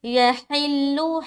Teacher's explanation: ہا کو بالکل حلق سے نکالنا ہے